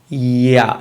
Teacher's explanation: In order to say ya, you have to move e to a. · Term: semi-vowels